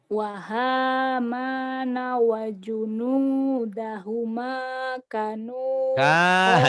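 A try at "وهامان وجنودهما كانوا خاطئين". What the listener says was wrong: Kanu, kanya panjang kalau yang gitu ya. Kanu. kanya panjang. Wa hamana wa junudahuma kanu khati'ina.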